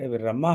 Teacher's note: तो र में छोटा स्वर है और ये मा में बड़ा स्वर है दीर्घ स्वर है